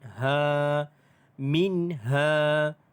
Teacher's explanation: mad asli huruf alif dibaca dengan panjang 2 harakat.